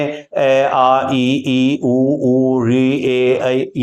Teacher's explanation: यह उच्चारण हम करते हैं तो नासिका का कोई रोल नहीं है आप नासिका को बंद करके भी आप नासिका को पकड़ ले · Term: निर अनुनासिक